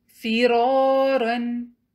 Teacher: فا کی ادائیگی اوپر والے دونوں دانتوں کے سرے اور نیچے کے ہونٹ کے اندرونی حصے سے ہوتی ہے۔